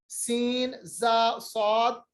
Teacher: ये जबान की नोक को हम नीचे वाले 2 दांत जिनको हम सना या सुफला कहते हैं उनके साथ मिलाते हैं और आवाज दांतों के बीच में से निकलती है